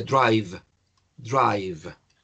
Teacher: el sonido v es el labio inferior contra los dientes superiores y hay una vibración